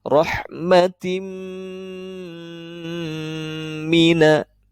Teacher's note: Jadi ketika ada tanwin bertemu dengan huruf mim, maka di sini harus diidghamkan, disertai dengan gunnah. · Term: idgham bi gunnah